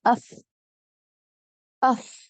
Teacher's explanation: فا جب ادا ہوتا ہے جب اوپر کے دانت نیچے کے ہونٹ کے گیلے حصے یا تری والے حصے پر ملیں